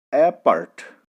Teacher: First syllable is unstressed and second syllable is stressed. As for example, apart, A-P-A-R-T, part. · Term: iambic